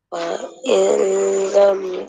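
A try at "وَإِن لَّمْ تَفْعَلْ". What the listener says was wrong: jangan dengung. Yang ni idgham bila gunnah. Tak boleh wa il. Jangan dengung. Wa illam. Wa illam. Idgham bila gunnah. Masuk tanpa dengung. Masuk je. Wa illam. Masuk tanpa dengung.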